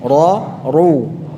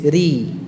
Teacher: untuk fathah dan dhammahnya tebal, ra, ru. Ya, kalau kasrahnya tipis, ri.